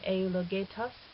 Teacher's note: And then in eulogetos, we have the accent on the ultima, on the very last syllable.